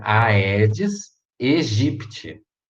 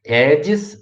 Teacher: O primeiro AE do Aedes, ele é separado, ele é um hiato